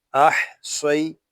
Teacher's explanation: حمزہ حا زبر اح، صاد یا زبر سوئی. یہاں صاد ہے، یہ حروف مستعاریہ میں سے ہے، اس کو پوری یعنی موٹا پڑھیں گے